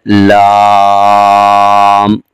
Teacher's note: زبان کا کنارہ اوپر کے دانتوں کے مسوڑوں کے ساتھ لگ رہا ہے